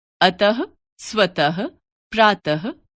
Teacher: हिंदी में विसर्ग का उच्चारण ह के रूप में होता है